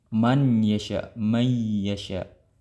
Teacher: adanya bunyi atau suara ee dari daripada ee rongga hidung keluar daripada rongga hidung